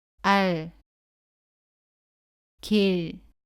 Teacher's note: 받침 소리 리을은 첫 소리에서 나는 라와는 다르게 혀 끝을 윗니 조금 뒤쪽에 댄 채로 발음을 끝냅니다